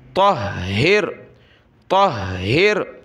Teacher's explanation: ہا کو سخت کیا تشدید کی وجہ سے